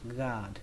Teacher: Âm A đây các bạn hơi kéo dài nó ra một chút